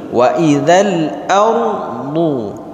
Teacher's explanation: Huruf hamzah di sini baris atas, maka ra dibaca tebal.